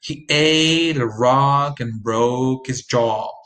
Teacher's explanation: Notice how I reduce he, a, and his. The others are important words.